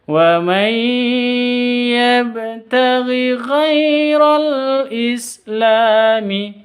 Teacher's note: ghai sifat lin, lentur, lemes, tidak boleh disentak